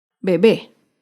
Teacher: bebé es una palabra aguda se acentúa en la última sílaba